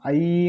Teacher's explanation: ஐன்னு சொல்லும்பொழுது அது முடியும் போது உங்களுக்கு சவுண்ட் ஈன்னு முடியுது